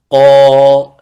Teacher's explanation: لكن القاف أنت تريد أن تخرجه من العمق من آخر اللسان، فيكون أقل لأنه منفتح، حروف انفتاح خا، لأن الانفتاح المقصود منه خروج الحرف، خروج الحرف.